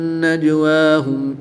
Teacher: جیم حروف کلکلہ میں سے ہے اور جب حروف کلکلہ ساکن ہوں تو ان میں کلکلہ خوب ظاہر ہوگا۔ نون مشدد میں ہمیشہ غنہ ہوتا ہے تو یہاں پر غنہ کر کے پڑھیں گے۔